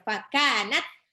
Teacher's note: Fakanat, tak sukun. Tak sukun itu punya sifat syiddah, tertahannya suara.